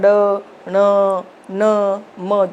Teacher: नासिक्य जिसको बोलने में हमारे नाक से आवाज निकलती है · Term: पंचम अक्षर